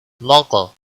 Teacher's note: قاف پر قلقلہ بھی ہوگا اور موٹا بھی پڑھا جائے گا، حروف قلقلہ میں سے بھی ہے، مستعلیہ میں سے بھی ہے۔